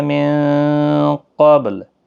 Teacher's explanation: من قبل، نون ساکن کے بعد حروف اخفا کا قاف اخفا حقیقی ہوگا، با ساکن پر قلقلہ ہوگا، لام ساکن ہوگا وقف کی صورت میں۔